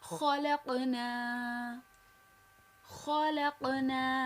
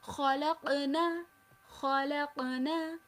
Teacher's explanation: मैं नून को खींच रही हूं।